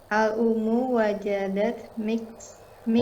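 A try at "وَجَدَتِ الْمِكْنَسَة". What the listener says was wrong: Wajadatil digabung jadi satu. Wajadatil. Ini karena bertemu dua sukun ya, maka jadi kasrah. Wajadatil miknasata.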